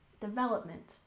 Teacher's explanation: we stress the second syllable in development